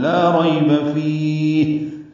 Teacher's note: وقف کرتے ہوئے فا کو لمبا کریں گے، ہا ساکن پہ ہمس ہوگا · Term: مد عارض للسکون